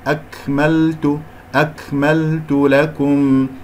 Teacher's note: نضم الشفتين في التاء والكاف مرققة